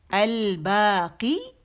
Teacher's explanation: قی کھینچیں گے 2 کاؤنٹس کے